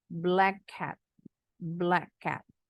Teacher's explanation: ini bunyi c sama k sama Tapi bacanya enggak perlu dituntaskan